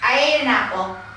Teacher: each word and say I ate an apple they would know they would run these together and say I ate an apple like one long word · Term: Rhythm